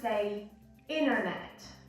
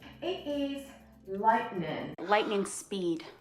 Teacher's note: the tongue would move as if you were going to pronounce the T, but then it is withheld, okay? And like they hold it back and they do not pronounce it. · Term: glottal T